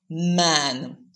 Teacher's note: to allow airflow into the nasal cavity um in man so when you're producing the sound the lips are tightly pressed but the air doesn't come out through the mouth so it's not an oral sound the air comes out through the nose and that's why you call it a bilabial nasal sound consonant